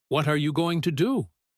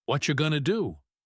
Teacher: We push all those tiny words together into one single sound. When you are listening, if you try to hear the individual words what are you going to, you will fail because those words do not exist in the spoken sentence. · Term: chunks